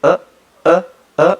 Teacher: Esta sexta vocal, la literatura nos dice que tiene dos variantes alofónicas. Una variante media alta no redondeada